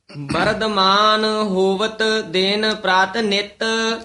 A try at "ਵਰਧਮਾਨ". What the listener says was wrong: ਵਰਧਮਾਨ ਦਦੇ ਨਾਲ ਨਹੀ ਕਹਿਣਾ ਵਰਧਮਾਨ ਧਦਾ ਹੈ ਵਿਚ